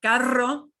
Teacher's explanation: But carro, carro gets a strong trill.